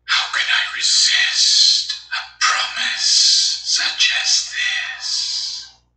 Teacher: places heavy emphasis on resist treating the idea of him ignoring This Promise as incredulous how